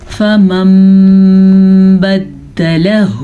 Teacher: نون ساکن کے بعد با آنے کی وجہ سے نون میم میں بدل جاتا ہے. تو میم تو آپ کے پاس لگا ہوا ہے, صرف آپ نے اس کو پڑھنا ہے, نون کو نہیں پڑھنا.